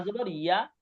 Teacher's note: ইয়া যেমন আপনি উচ্চারণ যেমন টান দিয়ে করেন, আপনি টানটা বাদ দিয়ে দেন, ইয়া জবর ইয়া, মানে ইয়া ছিল ইয়া, জাস্ট এতটুকু, টানটা শুধু মাইনাস আছে ইয়া।